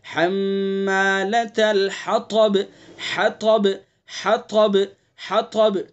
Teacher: طا کی صفت استعلا خیال کر کے پڑھنا ہے.